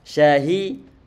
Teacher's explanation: ini huruf shin, dia tipis, cuman nanti perlu ada angin yang mungkin merembas keluar. Di samping itu pula nanti pengucapannya ada disertai dengan adanya angin yang merata ke mulut kita. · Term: sifat tafashi